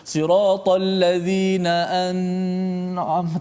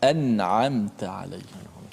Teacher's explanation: Nun tu dibaca dengan izhar, dimatikan dengan betul dengan menekan pada makhrajnya.